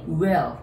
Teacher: will L があるので最後上に舌をつけ